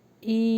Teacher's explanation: ای یہاں پہ غنہ ہوگا، تھوڑا لانگ ہوگا